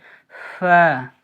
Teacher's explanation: নিচের ঠোঁটের ভিজে অংশ এবং সামনের ওপরে 2 দাঁতের আগার সাথে লাগিয়ে উচ্চারিত হয়